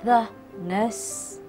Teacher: The E in the has a short sound before words beginning with a consonant